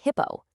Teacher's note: you hold back that little explosion of air that we're so used to in English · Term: unaspirated consonants